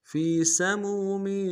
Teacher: فی سمو میں میم کو واو کے ساتھ ملائیں گے، واو مدہ ایک امداد میں کھینچیں گے ، اگلے میم تنوین کو واو کے ساتھ ملائیں گے، واو